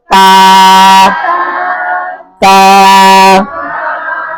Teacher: জিহ্বার আগা, উপরের দাঁতের গোড়া